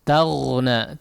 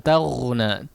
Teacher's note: Kemudian huruf ghain perhatikan pengucapannya taghna dialirkan suaranya ya. Dialirkan suaranya, jangan dimatikan tag ya atau dipantulkan tag.